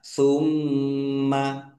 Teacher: Mim tasdid bacaan ghunah atau mendengung ditahan biar tampak mendengungnya.